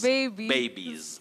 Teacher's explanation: that plural s takes the voiced sound